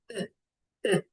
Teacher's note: c'est un relâchement musculaire c'est-à-dire bouche au rebout complet. Aucun effort musculaire des lèvres ou bien de la langue. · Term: le e